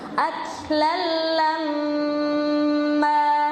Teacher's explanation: Nah, di kata aklan lamma ini juga kebanyakan orang bacanya aklan lamma, kurang sabar ya. Di situ mimnya ada tasdid, jadi harus lama dengungannya.